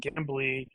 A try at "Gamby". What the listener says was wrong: It's funny to me that you keep saying Gambly. No, it's Gamby. no L.